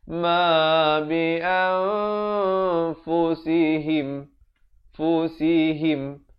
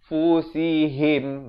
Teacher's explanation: Ha berkasrah bunyi hi, bukannya bunyi he.